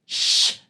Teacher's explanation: this sha is basically what happens when we try to do sa, but bring the tongue a bit more back. Shh. Try saying sa, but while taking your tongue much more back to really the roof of the mouth.